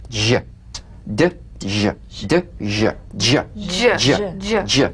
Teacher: It's a combination of the D drum beat and the ZH. So Place the tongue on the upper gum ridge for the D, D.